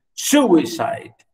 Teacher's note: Dactyl, stress syllable followed by two unstressed syllables